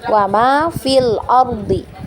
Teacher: karena misalnya kita washal ya bacaannya wama fil Ardi ya kita baca tidak panjang lagi